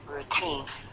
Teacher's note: The reason the T is strong is because the stress is on second syllable.